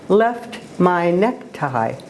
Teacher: the short e sound is followed by a long ey sound and then that pattern is repeated